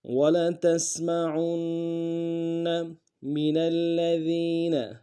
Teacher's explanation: منا میں نون کو آگے لام کے ساتھ ملانا ہے، لام کے اوپر تشدید زور دیں گے